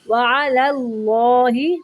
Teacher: پہلا لام باریک پڑھیں گے اور دوسرا اللہ کا لام موٹا پڑھیں گے